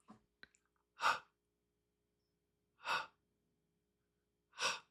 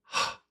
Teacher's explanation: It's only breath. No teeth, no voice. Just h breath.